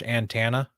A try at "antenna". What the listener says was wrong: do say it like you're saying Montana. I feel like you're just mostly over pronouncing the T. I'm just like antenna. Antenna.